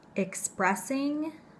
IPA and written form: ɪkˈspresɪŋ (expressing)